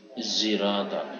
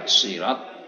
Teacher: membaca dengan dicampur antara bunyi shad dan bunyi za. Zirat, sirat tidak, azza ya juga tidak, zirat di antara za dengan shad, ya, sehingga muncul huruf baru varian.